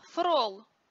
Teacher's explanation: русском языке русское имя фрол от латинского флорес что означает цветок где l и r поменялись местами